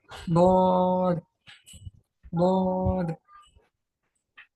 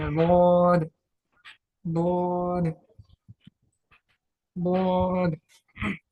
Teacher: जबान की करवट और ऊपर की दाढ़ों की जड़ से ही अदा होना चाहिए। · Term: दौध